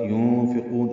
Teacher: اخفا ہے نون ساکن کے بعد فا کی وجہ سے. قاف کو لمبا کریں گے، مد عارض للسکون ہے، نون ساکن پہ اظہار ہوگا.